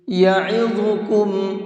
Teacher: یعظکم، عین کو حلق سے نکال کر کے پڑھیں گے اور ضا کو منہ بھر کے پڑھیں گے، اور کم کے اندر غنہ کریں گے، اس لیے کہ میم ساکن کے بعد میں با آ رہا ہے، اور میم ساکن کے بعد میں با آتا ہے تو یہ بھی تجوید کا ایک رول ہے، وہاں پر غنہ اور اخفا دونوں کر کے پڑھتے ہیں۔